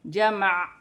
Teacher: وقف کی صورت میں زبر گر جائے گی اور عین ساکن ہو جائے گی، اور وقف کرنے کی صورت میں عین کی ہلکی سی آواز آئے گی